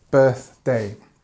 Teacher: with the word birthday we always kind of add a stress at the beginning of the of the word